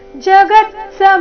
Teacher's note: ಶಬ್ದದಲ್ಲಿ ಎಲ್ಲಾ ಅಕ್ಷರಗಳು ರಸ್ವ ಗ ಮತ್ತೆ ಮೇಲೆ ಆಘಾತ ಬರಬೇಕು